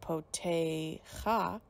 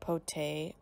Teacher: instead of saying cha as the end of the word, you say ach. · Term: patach ganuv